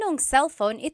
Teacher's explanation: usually whenever someone is speaking quickly the na is dropped